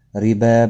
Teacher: ربا، با کے اوپر کھڑی زبر ہے، ایک الف کی مقدار کے برابر کھینچ کر پڑھا جائے گا۔ را زیر کی وجہ سے باریک پڑھا جائے گا